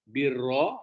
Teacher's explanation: Birra, ya, dia tebal, birra ditafkim, ya.